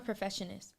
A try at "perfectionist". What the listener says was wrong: Perfectionist. Put the K in it. No, perfect.